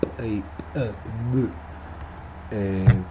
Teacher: consonantes bilabiales, donde entran en acción, digamos, los dos labios, como el caso de la P y de la B, que las llamamos así, pero en términos de sonido serían P y B.